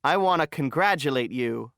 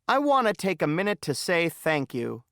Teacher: in casual speech going to is often reduced to gonna and want to is often reduced to wanna